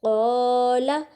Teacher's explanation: الف مدہ. اس کا مطلب ہم قاف کو ایک تو موٹا پڑھیں گے، دوسرا اس کو تھوڑا سا کھینچیں گے بھی